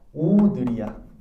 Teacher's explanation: 오늘을 발음할 때 혀의 높이는 낮다가 높아진다